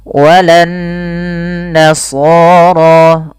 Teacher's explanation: Cara membacanya adalah ditahan suara nunnya sepanjang 2 harokat. Jadi tidak langsung dibaca walan nasara, tapi ada tahanan dulu sepanjang 2 harokat. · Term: gunnah